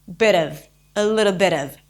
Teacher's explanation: the T in the bit turns into a flap t